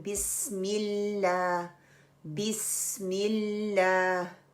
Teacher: लाम को पकड़ के रखना है। उसके ऊपर कलकला नहीं करना है। · लाइट लाम के लिए हमने जुबान का जो नोक है वो सिर्फ उठानी है और वो सामने वाली गम्स को लगानी है और जो जुबान पीछे से रिलैक्स रहेगी।